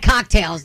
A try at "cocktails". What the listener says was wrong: She had what? You have to finish the word. She had cocktails. You have to say tails at the end.